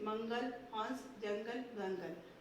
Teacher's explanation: अनुस्वार को उच्चारण नाक से किया जाता है